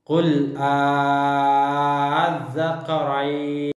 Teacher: apabila 2 hamzah bertemu, yaitu hamzah istifham untuk bertanya dan hamzah wasal pada alif lam ma'rifah, dan bacaannya dipanjangkan hingga 6 harokat. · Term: mad farq